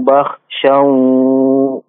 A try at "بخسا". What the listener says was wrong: Bakhshaw pakai sin biasa. Bakhshaw.